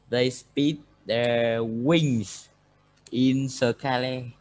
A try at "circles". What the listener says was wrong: Not circle. Circles. Again, circles with S. With S.